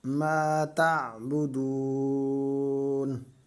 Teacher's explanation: دال کو ایک الف کی مقدار کھینچ کر پڑھیں گے کیونکہ یہ واو مدہ ہے